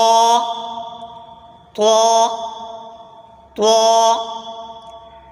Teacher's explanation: जबान की नोक और ऊपर के दांतों की जड़ से अदा होता है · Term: त्वा